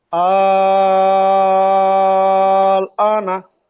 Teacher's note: হামজার উপর খাড়া জাবার এসছে, খাড়া জাবারকে 1 আলিফ পরিমাণ টান দিয়ে পড়তে হবে।